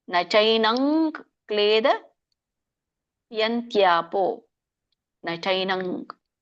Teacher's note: ಮುಂದೆ ಕ ಇದೆ, ಹಾಗಾಗಿ ಏನ್ ಬರುತ್ತೆ? ಂಗ ಬರುತ್ತೆ.